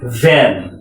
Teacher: উপরের দাঁত, নিচের ঠোঁট, ভি।